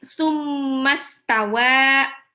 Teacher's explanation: mim tasdid ini punya sifat gunnah